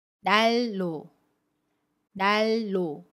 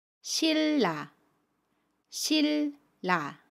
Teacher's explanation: 유음화는 자음 니은이 리을 앞이나 뒤에서 리을로 발음하는 현상을 이야기합니다. 예를 들어 받침 니은 뒤에 첫소리 자음 리을이 오면 받침 니은을 리을로 발음해요. 첫소리 자음은 그대로 리을로 발음합니다.